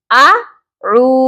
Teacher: ہم نے عین کو کھینچنا ہے، اعو، اعو، اور اس کو آؤ، آؤ اس طرح نہیں پڑھنا، ایک حرف نہیں ہے، یہاں پہ 2 حروف ہیں اور دونوں حروف حلقی ہیں، حلق سے ادا ہوتے ہیں۔ اعو، عین کی آواز درمیانی حلق سے آئے گی